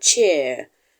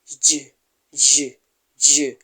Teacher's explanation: air is coming out from the mouth there is a friction there is a friction because the air is just managing to get out through a narrow space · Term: affricates